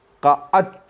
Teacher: دال اور تا قریب المخرج ہیں تو ان کا ادغام ہے، لہذا دال کو تا میں بدل دیں گے۔ قعدت، تو دال پڑھا ہی نہیں جائے گا۔